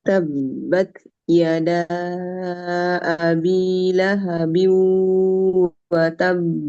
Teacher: Setelah syiddah kita kuat pada ta, lalu kita lepas dengan hams.